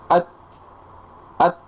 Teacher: Jadi ada hembusan nafas setelah tertahan. Tertahannya suara dulu, kemudian aliran udara atau nafas setelahnya.